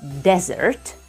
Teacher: one of the meanings of this word as a noun can be desert the stress goes on the first syllable